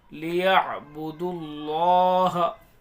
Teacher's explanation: دال کو لام میں ملائیں گے، یہ الف نہیں پڑھے جائیں گے دونوں، اور یہ واو الف الف، یہ تینوں حرف نہیں پڑھے جائیں گے، لیعبدوا اللہ۔